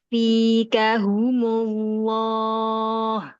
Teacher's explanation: Langsung tebal pas idogom ke lam.